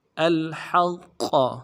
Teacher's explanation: قوف موٹا والا حرف ہے، موٹا کریں گے، قوف کے اوپر تشدید ہے، زور دیں گے